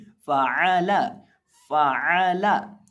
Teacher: निचले होंठ का वस्त जब सामने वाले ऊपर के 2 दांतों के किनारे से लगता है तो फ़ा अदा होता है, और आइन हलक के बीच से हलक के वस्त से अदा होता है, और लाम को हम यहाँ बारीक करके पढ़ेंगे